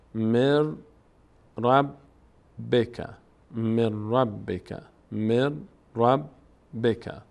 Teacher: نون تبدیل شده به را نون اینجا تلفظ نمیشه به جای نون ر تلفظ میشه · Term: ادغام